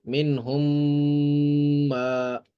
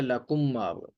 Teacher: ٹھیک ہے، یہاں پہ بھی لکم ما تھا تو میم ساکن کا میم متحرک میں ادغام ہو گیا، یعنی پہلی میم کو ہم نے دوسری میم میں داخل کر دیا تو وہ ہو گیا لکم ما.